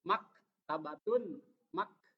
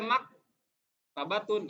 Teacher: Mak harus ada sedikit pecah hes hes itu pecah udara mengalir sedikit Mak tabatun mak tidak boleh mak tabatun enggak boleh karena itu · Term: Hames